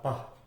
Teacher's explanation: dalam menghasilkan pah, sebetulnya vocal cords kita itu tidak bergetar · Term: voiceless